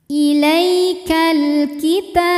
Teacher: Ilaikal kita, ta hukumnya adalah mad tabi'i muqaddar sebab huruf ta berbaris fathah panjang, maka ta panjang 2 harokat